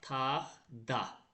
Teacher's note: İkinci kar samit özünün cingilti qarşılığına çevriləcək.